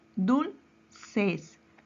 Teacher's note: Su mayor fuerza de voz recae en la penúltima sílaba. Entonces es una palabra grave.